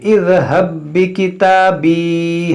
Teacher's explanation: ہا متحرک با ساکن اور با مشدد تو یہاں پر دیکھیں با دونوں برابر ہے تو یہ با میں داخل ہو جائے گا